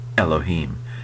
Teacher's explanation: it Elohim just a little kind of gladle stop it's called where you kind of constrict your throat a little before you say the e in Elohim uh so it's not there's no letter in English like this